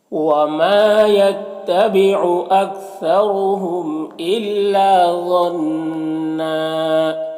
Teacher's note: ذا حروف مستعلیہ میں سے اسے پر پڑھیں گے · یہاں پر نون مشدد غنہ ہوگا. دو زبر ہے، یہاں پر وقف کریں گے تو ایک زبر کے ساتھ الف پڑھیں گے · وما یہاں پر الف مدہ ہے تو اسے ایک الف کے برابر کھینچ کر پڑھیں گے. یہاں پر را کے اوپر پیش ہے تو را کو پر پڑھیں گے. میم میں اظہار شفوی ہوگا، اسے جلد پڑھنا ہے.